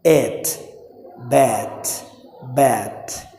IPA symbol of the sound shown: æ